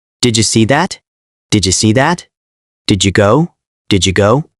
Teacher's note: When did ends with D and you starts with J, they blend to didja.